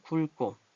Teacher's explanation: 기역기역 합쳐서 굵고 된소리가 났네요